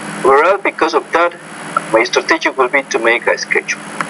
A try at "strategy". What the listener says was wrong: My strategy would be to make, not strategy. My strategy, that's a word stress issue. Again, be careful of that word stress.